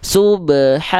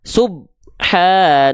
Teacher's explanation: Jadi nggak perlu ditahan karena dipantulkan bukan dipanjangkan. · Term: qalqalah